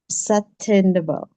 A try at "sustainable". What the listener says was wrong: That's closer. That's better. Yeah. It's just that tricky second S right here.